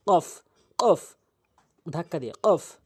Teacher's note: কফ উচ্চারণ হচ্ছে জিহ্বার গোড়া থেকে উপরে তালু